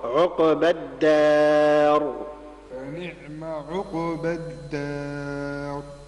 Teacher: سكن القاف مع القلقلة